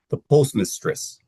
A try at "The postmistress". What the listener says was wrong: I think it's the rhythm of it. The postmistress. The postmistress. little too much time on mistress. So move through miss a little faster.